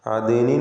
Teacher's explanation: അദ്നിൻ എന്ന് പറയുമ്പോൾ ദാലിൻ്റെ സുക്കൂൻ ഖൽഖല സുഗ്റ ചലിപ്പിച്ച് വ്യക്തമാക്കണം.